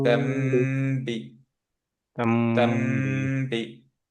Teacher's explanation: পরে যেহেতু বা আছে নুনটা মিম হয়ে গেল, সে কারণে মিমে গুণা